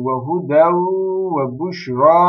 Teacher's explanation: وَهُدَوْ وَبُشْرَى لِلْمُؤْمِنِينَ Bakın burada da arkadaşlar idgam-ı me'al-gunne var. Tenvinden sonra ne gelmiş? Vav gelmiş arkadaşlar. İdgam-ı me'al-gunne oldu.